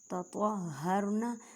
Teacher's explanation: تو کو ادا کرتے وقت خیال رکھیں کہ تا کی آواز نہ آئے، کیونکہ یہ حروف مستعلیہ موٹے حروف میں سے ہے. وا ساکن سے پہلے زبر ہے تو را کو موٹا پڑھیں گے.